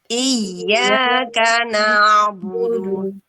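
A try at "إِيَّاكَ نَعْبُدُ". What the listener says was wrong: Iyanya jangan terlalu panjang.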